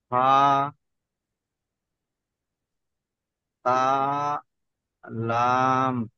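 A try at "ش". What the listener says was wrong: তা নয়, এটা হচ্ছে শিন, এই দেখেন, এইটাই। এটা হচ্ছে সিন আর এটা হচ্ছে শিন। শিন, মোটা আওয়াজ, বুঝতে পারছেন?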